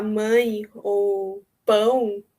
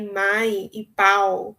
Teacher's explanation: vogal da palavra mãe é muito difícil fazer hispânicos conseguirem falar é porque não existe essa vogal nasal no espanhol né então quando eles vão falar mãe ou pão por exemplo muitas vezes sai mais e pau